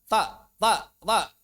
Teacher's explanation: Membaca dengan sifat syiddah, ta. Ya, jadi hilang rikhwahnya.